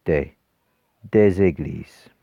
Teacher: We don't write it, we still write it as it is on the left hand side of the equal sign, but when we pronounce it, we pronounce a little z in front of the e